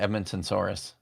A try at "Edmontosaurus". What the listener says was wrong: But it's not though. There's no N at the end of it.